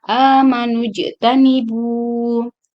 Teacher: di sini ada jim yang disukunkan, maka hukum membacanya diqalqalkan.